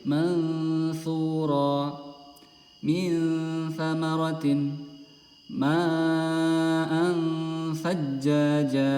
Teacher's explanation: Jadi huruf ikhfa hakiki ini cara membacanya adalah kita harus udah siap di huruf tha. Jadi lidah kita udah siap, ancang-ancang udah masuk ke huruf makharijul huruf ta, yaitu ujung lidah agak keluar sedikit.